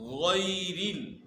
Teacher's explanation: غیرل یہاں جو ہے یا لین ہے، یا ساکن سے پہلے جو ہے زبر ہے، تو یہ یا لین ہے اور اس کو نرمی کے ساتھ ادا کرنا